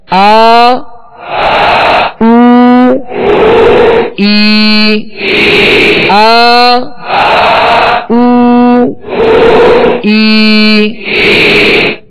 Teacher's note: اس کو دو حرکت یعنی ایک الف کی مقدار میں کھینچ کر ادا کریں گے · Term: الف مدہ